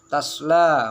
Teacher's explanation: fathah, alif sesudah huruf fathah itu harus dibaca panjang sekitar 2 harokat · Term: mat tabi'i